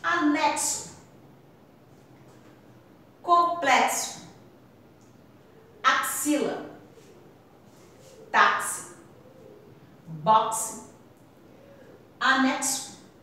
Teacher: A palavra tá com X, mas tem o som de CS.